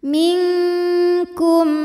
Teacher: Cara bacanya adalah nunnya dibunyikan samar-samar, siap-siap menuju makhraj huruf kaf disertai bunyi dengungan, dan dengungnya besar untuk huruf kaf ini. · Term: ikhfa